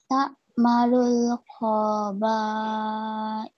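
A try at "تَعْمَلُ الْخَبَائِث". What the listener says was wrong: Kau-nya pendek ya, sayang ya. Ta'malul khobais. Coba sekali lagi.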